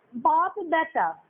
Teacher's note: প ধ্বনিটা অঘোষ ধ্বনি ছিল, প ধ্বনিটা ব ধ্বনিতে পরিবর্তিত হয়ে গিয়ে এটা ঘোষ ধ্বনিতে পরিণত হয়ে গেল। তাহলে এখানে দেখলাম শব্দের মধ্যে অবস্থিত অঘোষ ধ্বনি যখন ঘোষ ধ্বনিতে পরিণত হয়ে যাচ্ছে, তখন তাকে বলা হচ্ছে ঘোষীভবন।